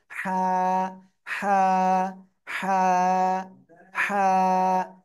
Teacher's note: আমার কিন্তু মনে হচ্ছে আপনাদের একটা শীষ হচ্ছে, কিন্তু শীষ দেওয়া যাবে না কিন্তু, হ্যাঁ। গলাটা চেপে হালকা বাতাস বের করে উচ্চারণ করতে হবে।